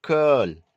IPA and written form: kɜl (curl)